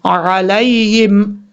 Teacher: عین کو کلیئر کر کے پڑھنا ہے، حمزہ کی آواز نہیں آنی چاہیے. لام کے بعد جو یا ہے یہ بھی یا لین ہے یا مدہ نہیں ہے، اس کو بھی لمبا کر کے نہیں پڑھیں گے. · لام کے بعد جو یا ہے یہ بھی یا لین ہے یا مدہ نہیں ہے، اس کو بھی لمبا کر کے نہیں پڑھیں گے. اس کے بعد ہا جو ہے یہ ہا بھاری ساؤنڈ کے ساتھ پڑھا جائے گا، اس کو بریک نہیں پڑھنا.